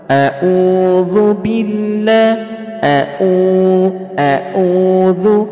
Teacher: Berarti kesalahan seseorang yang membaca ain adalah membacanya seperti hamzah. Ya. Membacanya seperti huruf hamzah.